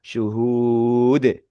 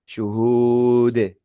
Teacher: huruf dal ternyata yaitu huruf qalqalah. Huruf yang memantul